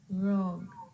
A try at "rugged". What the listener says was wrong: take that word luggage and then rugged. It's actually two syllables, not one. Rugged.